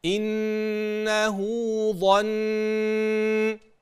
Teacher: نون انه ونون ظن سمعناها واضحه وفيها غنه واضحه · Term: غنة واضحة